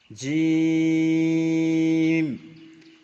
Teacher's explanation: জিমের মাখরাজ জিবের মাঝখান তার বরাবর উপরের তালুর সঙ্গে লাগিয়ে উচ্চারিত হয় জিম, চেপে হবে। শিন, ইয়া, জিম, শিন, ইয়া, একই মাখরাজ।